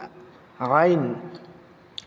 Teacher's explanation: এই আইনের মাখরাজ হচ্ছে অসতে হলক। কন্ঠনালীর অর্থাৎ গলার মধ্যস্থল। সেখান থেকে একটু চাতা দিয়ে আইনকে তুলতে হবে।